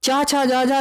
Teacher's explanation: चा छा जा झा यहाँ का स्थान भी क्या होगा? तालु होगा। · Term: चा वर्ग